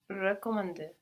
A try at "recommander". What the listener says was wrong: Recommander. Good, but when you're thinking so much, concentrating on that first E, don't let it carry over into the other sounds, like the E on the end. No, let it go once you've pronounced it. Recommander.